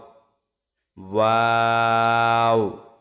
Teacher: দুই ঠোট গোল করে সামান্য খোলা রেখে উচ্চারিত হয় ওয়াও